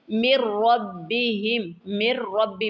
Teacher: میم کو ڈائریکٹ را کے ساتھ ملائیں گے، نون کو چھوڑ دیں گے۔ مِن رَبِّهِمْ، یہاں بھی غنہ کریں گے۔